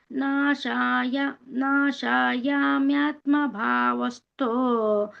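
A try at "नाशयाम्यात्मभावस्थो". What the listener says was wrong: ನಾಶ ಇಲ್ಲ ನಾಶಯ ನಾಶಯಾಮ್ಯಾತ್ಮ ಭಾವಸ್ತೋ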